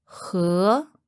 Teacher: that sounds very similar to the word for to drink but it's slightly different and has a rising second tone